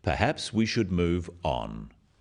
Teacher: this falling intonation makes it a more definite statement rather than a suggestion · The first one, "perhaps we should move on," is phrased as a suggestion, but it is said in a firm way with a falling intonation at the end